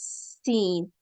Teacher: س کی ادائیگی کے لیے زبان کی نوک اوپر والے دانتوں کے ساتھ جب لگاتے ہیں اور اس میں ہوا کا اخراج باہر کی طرف ہوتا ہے تو س کی ادائیگی ہوتی ہے، اور سین کی ادائیگی کے لیے نچلے والے دانتوں کے ساتھ زبان کو لگاتے ہیں اور دانتوں کو قریب ترین کرتے ہیں تو اس میں سے سیٹی کی آواز آتی ہے